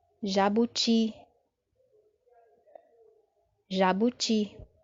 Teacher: Perceba agora que a sílaba forte está na última posição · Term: sílaba tônica